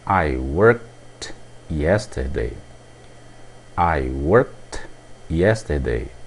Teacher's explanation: o som é o som de T isso por o verbo termina com o som de k